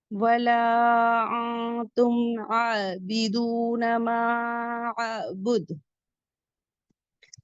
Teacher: दाल पे कलकला होगा क्योंकि जब वफ करेंगे तो सुकून देंगे कलकला कुबरा होगा · معبد مد منفصل، اسے بھی 4 to 5 کاؤنٹ پڑھیں گے. دال پہ قلقلہ ہوگا کیونکہ جب وقف کریں گے تو سکون دیں گے، قلقلہ کبرا ہوگا